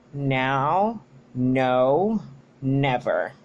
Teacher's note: The place of articulation is alveolar because it uses the tip of the tongue against the alveolar ridges of that are behind the upper teeth.